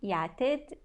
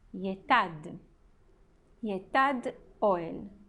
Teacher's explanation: uma vogal longa, o E, o tsere, ele muda para uma vogal breve, o A, que é o patar